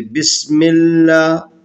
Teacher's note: تو یہاں پر بسم اللہ میں یہ لفظ اللہ ہے، اس سے پہلے میم کے نیچے زیر ہے، لذا یہاں پر لفظ اللہ کو ترقیق پڑھیں گے